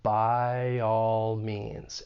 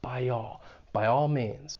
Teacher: we're gonna use a slight Y sound which comes after front vowel sounds like I · And intrusion is when you're adding either a slight W sound or a slight Y sound, and that then allows us to link 2 vowels. And we're going to use a slight Y sound, which comes after front vowel sounds like I